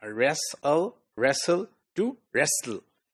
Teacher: the tongue remains at the same place for both the alveolar or alveolar plosive or alveolar fricative sounds, and we move the tongue from the sides lower so that the air could escape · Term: syllabic l sound